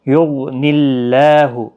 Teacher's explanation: یغنی اللہ، غین مستعلیہ ہے، پر پڑا جائے گا۔ اللہ کا لام اس زیر کی وجہ سے باریک ہوگا، اس کے اوپر کھڑی زبر بھی ہے، ایک الف کی مقدار کے برابر کھینچ کر بھی پڑھیں گے۔